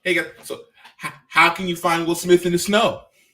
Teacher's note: strategy yeah because it's like it will smith becomes the afterthought emphasis comes on the snow